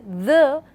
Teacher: it is a voiced sound because the vibration is more at the vocal cord area